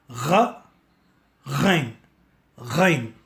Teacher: गैन उच्चारण करने के लिए गरारा वाला ध्वनि उसके साथ मिलाकर ग यानी जी वाली ध्वनि को मिलाएंगे तो आपको गैन मिलेगा।